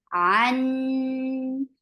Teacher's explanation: keep the sound in your nose for a longer time. An, and then it is 4 counts long because this is mad munfasil. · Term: akmal gunna